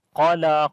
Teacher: Qaf we read in heavy sound due to isti'la letter. And lam we long due to standing fatha on it.